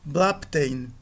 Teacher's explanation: E nós vemos aqui a ocorrência do beta, que é uma oclusiva sonora.